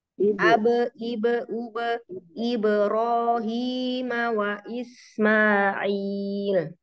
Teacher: Huruf ba yang sukun pantulkan dulu, jadi jangan ibro tapi ibe. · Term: pantulan